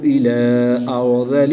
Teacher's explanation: را ساکن سے پہلے زبر ہے تو اس لیے را کو پر یعنی موٹا پڑھیں گے